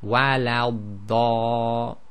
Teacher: Now in Surah Fatiha you have wala dallin, and that's when the dad carries the shadda, and you'll notice when you join to the dad, you hold it for slightly longer than you would any other letter. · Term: elongated sound